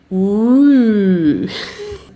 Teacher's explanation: Ihr versucht also mit dem Mund so ein Spitzenmund, ein U zu formen, aber dann versucht ihr ein I da rein zu machen. Ü. Ü ist quasi U und I zusammen.